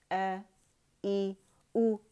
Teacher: हमजा की आवाज़ अक़सुल हल्क से निकलती है